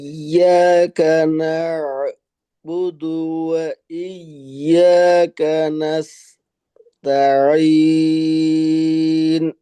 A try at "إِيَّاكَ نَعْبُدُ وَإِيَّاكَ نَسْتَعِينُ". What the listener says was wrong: জি, এই যে কাজটা করলেন, এইটা আরেকটু মিলিত ভাবে করতে হবে, এরকমই হবে বিষয়টা।